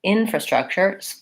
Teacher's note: first syllable stress, shorter on these other ones